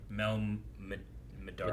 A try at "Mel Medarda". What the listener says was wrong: Medarda. So there's no L in the last name. I think is what you had. a Mel. I think you mixed together the Mel and the Medarda. But I think it's Mel Medarda.